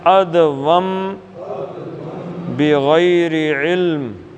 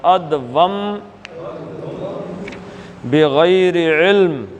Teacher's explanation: نون ساکن کے بعد با آ جائے تو اس میں میم کی آواز آتی ہے